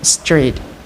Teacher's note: It consists of three consonant sounds, either voiceless alveolar fricative s or fricative sa, voiceless alveolar stop ta, and voiced palato-alveolar approximant ra, and two vowel sounds, either mid-high front unrounded vowel a and mid-high front unrounded vowel e.